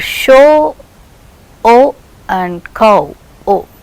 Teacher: both they are ending to the position of just above half close position, and lips are rounded towards the end for both of these